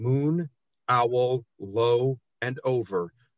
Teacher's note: the long o sounds in moon owl low and over really draw out this poem and echo against each other